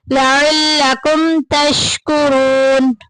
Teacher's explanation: ज़ालिका लअल्लकुम तशकुरून, लअल्लकुम में देखें मीम साकिन के बाद ता आ गया, इजहार शफी के खानदान में से जाहिर करके पढ़ेंगे